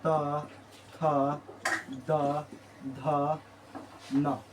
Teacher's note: दंत से बोला जाता है तवर्ग